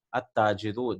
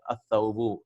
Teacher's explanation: See, we are not pronouncing the lam.